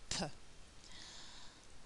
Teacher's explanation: I feel my vocal cords it doesn't make them vibrate and there's very strong air flow with P so if I hold the piece of paper in front of my mouth it will really move · my lips close tightly to stop the air coming out from my throat then there's a kind of explosion and a release of the air so both lips tightly together and then release that air p